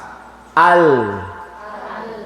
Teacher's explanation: tepi lidah bagian ujung sampai ke penghabisan huruf lam ke atas